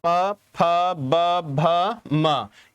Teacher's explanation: प वर्ग यानी कि जहां दोनों होठों से आपस में मिलते हो, प, ह, ब, यानी कि बोलने से पहले दोनों होठ आपस में मिल रहे होंगे